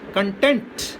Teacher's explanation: Supposing you want to use this as a verb, then it becomes content. So the accent shifts from first syllable to the second syllable.